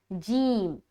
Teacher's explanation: ज़बान का बीच और उसके मुकाबिल ऊपर का जो तालु है उससे हम टच करके निकालते हैं